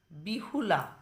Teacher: মূল শব্দে কিন্তু হ ছিল না, এখানে পরিবর্তিত শব্দের মধ্যে দেখো হয়ের আগমন ঘটেছে মাঝে, তাই একে বলা হচ্ছে কি হ শ্রুতি।